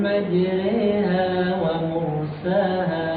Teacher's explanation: huruf ra ini dibaca tarkib tipis jangan dibaca tafkhim. Kan kalau asalnya huruf ra itu ketika fathah itu kan tafkhim ya. · Ini dibaca dengan majreha, ya, dibaca dengan imalah, miring.